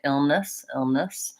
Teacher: there's not a significant difference between these vowels in that unstressed syllable